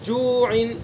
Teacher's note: منہ کے خالی حصے سے واو مدہ کو ادا کریں گے